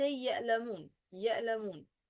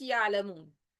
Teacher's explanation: This is common mistake for non-Arab people especially when produce همزة instead of عين. يعني they say يألمون يألمون not يعلمون.